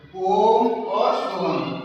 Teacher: इनको ह्रस्व स्वर से 3 गुना समय लगता है। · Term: त्रिमात्रिक स्वर